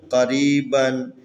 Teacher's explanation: یہاں پر قاف حروف استعلا میں سے تفخیم. یہاں پر یا حروف مدی ہے، ساکن ہے، اس سے پہلے را کے نیچے زیر ہے جو مناسب حرکت ہے، لذا اس کو لمبا کر کے پڑھیں گے